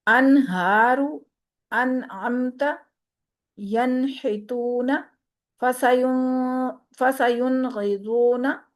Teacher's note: نون کی آواز کو ہم نے چھپانا نہیں ہے، بلکہ نون کی آواز کو ہم نے ظاہر کرنا ہے